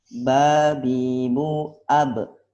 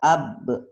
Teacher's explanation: kalau dia sukun, kita langsung pantulkan, nggak perlu ditahan